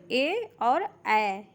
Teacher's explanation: ए और अ ये हमारे कंठ और तालू से होते हैं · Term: कंठ तालू